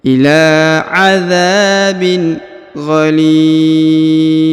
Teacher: Huruf li dipanjangkan, boleh 2, boleh 4, boleh 6 ya, karena di depan huruf li yang ini terdapat ya sukun atau ya mati